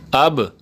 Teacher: اب با کو ہلانا ہے کیونکہ یہ قلقلہ والا الفاظ ہے